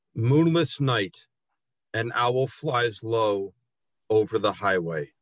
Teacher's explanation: there is only one hard plosive sound in the entire piece, the T in night.